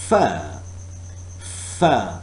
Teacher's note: air is forced through the upper teeth and lower lip fur fur so we were trying to understand the narrow channel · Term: labiodental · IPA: /f/